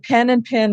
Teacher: And in fact, here in Hawaii, we have what's called the pen-pin merger. And pen and pin sound alike. And it kind of comes out as an amalgamation of the two sounds.